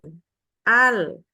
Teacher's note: nah itu akan terasa bahwa lidah kita bergerak seluruhnya Al ya diakhiri dengan menyentuhkan ujung lidah ke langit-langit